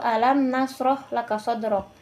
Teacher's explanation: Itulah tadi eh surat Quran surah Al-Insrah yang kemudian mari kita pelajari hukum tajwid dari Quran surah Al-Insirah ayat pertama yaitu alam nasroh laka shodr di pada kata alam itu ada hukum yang namanya alif lam qamariah yang di mana alif lam itu dibaca dengan jelas · Pada kata alam itu ada hukum yang namanya alif lam qamariyah, yang dimana alif lam itu dibaca dengan jelas